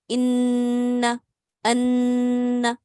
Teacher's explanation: 2 counts तक आपने अपनी आवाज को नाक में ठहराना है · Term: गुन्ना